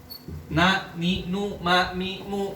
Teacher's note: Kalau dipegang hidungnya nggak bisa. Coba kita ma dengan hidung dipecet, nggak keluar karena ada gunah.